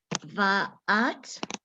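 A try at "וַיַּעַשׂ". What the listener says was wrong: There's a yud.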